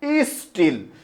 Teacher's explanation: এই ই স্টিলের মধ্যে একটা অতিরিক্ত ই আসছে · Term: সরাগম